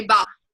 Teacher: they're leaving off that final sound so that's called final consonant deletion · Instead of saying ball, they might say ba, because they're leaving off that final sound.